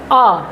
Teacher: केवल अ ही एक ऐसा स्वर है जो जीभ के मध्य भाग से निकलती है। इसलिए इस स्वर को कहा गया है मध्य स्वर।